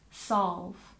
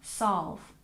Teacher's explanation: the l sound isn't exactly invisible in this sound but we do tend to soften it